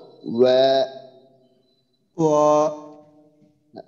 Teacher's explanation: হ্যাঁ, ওয়া, ওয়া যেন না হয় আবার ওয়া। দুই ঠোঁট গোল হবে, এরপরে বা মতো একটা উচ্চারণ আসবে ওয়া। হ্যাঁ, একবারে বা আবার হয় না যেন, ওয়াও জবর বা যেন না হয়।